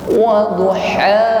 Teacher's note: Sedangkan ha adalah aqsal halqi, tenggorokan yang bawah.